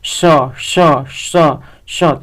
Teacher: श ध्वनि होती है श तालव्य से होती है।